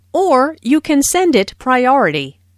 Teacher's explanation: notice the stress on or which emphasizes that there is another possibility